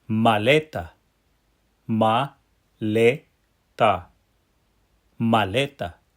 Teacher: >> Did you see here that that second to last syllable lei is the syllable that gets the pow. That's why you hear the word go up in the middle and then drop at the end